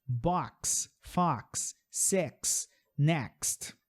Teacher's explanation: da letra X, a letra X dentro dela, ela tem o KS.